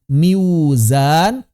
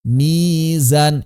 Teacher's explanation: Maka orang-orang Arab merasa berat mengucapkan kasroh ketemu waw yang konsonan. Oleh karena itu waw yang konsonan diubah menjadi mad.